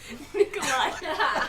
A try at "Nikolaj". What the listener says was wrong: Nikolaj, the J is silent.